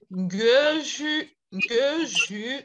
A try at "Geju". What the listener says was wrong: Non, c'est pas ju. C'est pas ju, c'est ru, ru, ru.